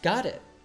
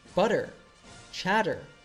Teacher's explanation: we can hear an American T which makes the T morph into a soft D this happens when you have a t sound between two vow